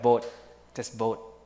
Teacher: T in boat is unreleased, not released. You don't say boat, but boat, just boat, without releasing the air.